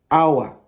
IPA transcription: aʊə